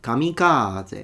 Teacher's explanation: He stressed the ka so much.